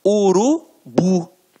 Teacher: a pronúncia da última sílaba ficará mais forte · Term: oxítona